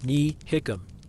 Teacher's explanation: the negative particle, ní, has the effect of turning the initial T in the verb into an H sound. This is called lenition, but here we represent the change on paper by inserting the H after the T.